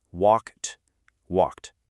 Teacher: The verb walk ends in that voiceless k sound, so we add the t sound at the end.